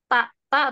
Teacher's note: oh Afan eh ta itu huruf alisan Heeh Di ujung di ujung lidah bertemu dengan pangkal gigi seri atas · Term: huruf ta